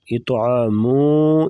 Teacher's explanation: یہاں پر اخفا ہوگا یعنی ناک میں آواز چھپا کر غنہ کرنا